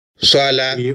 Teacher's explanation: We really have the feeling that there is no clear difference between the two vowels and that the stress and tone have the same influence, in fact, on these vowels.